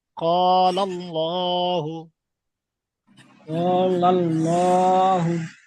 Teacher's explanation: আল্লাহ শব্দের ডান দিকে যাবার এসেছে, তাই আল্লাহর লামকে পুর করে পড়তে হবে।